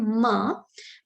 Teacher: when I say ma, my two lips are coming together. At the same time, when the lips are coming together, the air that is coming out is being stuck. It is being forced to stay inside the mouth.